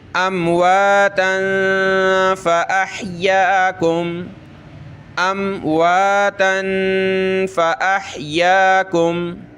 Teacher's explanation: اس میم پہ ہم نے غنہ کرنا ہے، یعنی ناک میں آواز پیدا کریں گے